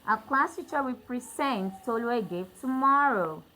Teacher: So I stress my second syllable to show that this is actually a verb, not a noun.